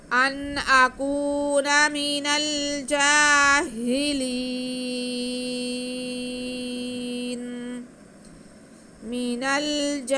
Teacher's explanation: ہم نے نون کا زبر ختم کر کے یہاں پہ نون کو ساکن کرنا ہے کیونکہ ہم نے وقف کرنا ہے. تو حرف مدہ کے بعد جب نون ساکن آئے گا، عارض سکون آئے گا تو مد عارض ادا ہوگی. ہم وقف کھینچ کے کریں گے.